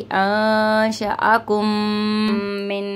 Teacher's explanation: ये मीम साकिन के बाद मीम है तो इदगाम शफवी का गुन्ना है